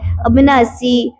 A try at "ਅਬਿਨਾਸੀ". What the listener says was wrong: ਅਬਿਨਾਸੀ ਅਨਾਸੀ ਨਹੀਂ ਕਹਿਣਾ